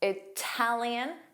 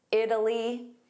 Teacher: Italian, strong T. Italy, soft D.